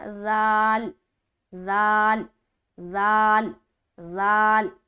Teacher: इसका सही मखरज क्या है, तनाया उलिया का किनारा और ज़बान की नोक. जब ज़बान की नोक को तनाया उलिया के किनारे पर टच करेंगे तो ये हर्फ अदा होगा.